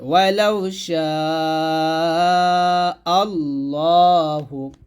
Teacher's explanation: ওয়ালাউ শা এর সাথে 4 প্রাণ দিতে হবে ওয়ালাউ শা আল্লাহু। এখানে আল্লাহ না বলে ল বলতে হবে, কারণ আল্লাহ শব্দ লামের ডানে জবর মোটা হবে